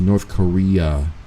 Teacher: I need it like a soft U, like a U like umbrella. Because when you say North Korea, you're ending it with a UH sound most of the time. No one says it with an A at the end.